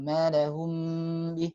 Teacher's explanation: Tabrak-tabrak aja, padahal ada hukum di situ, harus ditahan dulu mimnya. Karena ada 2 mim di situ.